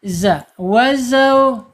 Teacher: Makhrajnya zai ada di ujung lidah menyentuh pangkal gigi seri bawah, yang bawahnya. Kemudian sifatnya dia mempunyai sifat 5 karakter.